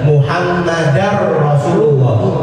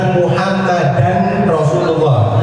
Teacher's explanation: Nah ini dibacanya juga sama, idgham bila ghunnah. Muhammadar Rasulullah, bukan Muhammadan Rasulullah.